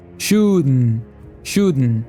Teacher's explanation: ele faz uma pausa interrompendo o ar meio que com o nariz e deixando sair novamente · Quando ele diz shouldn't, ele usa o glottal stop, ou seja, uma pausa nas cordas vocais, e até um som nasal